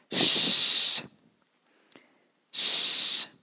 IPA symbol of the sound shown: ʃ